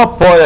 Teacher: E ainda é o ditongo oi, só que agora a base, a vogal é de timbre fechado